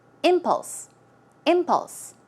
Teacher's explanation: the stress goes on the first syllable, so it's impulse.